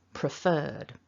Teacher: we've got that long er vowel followed by a d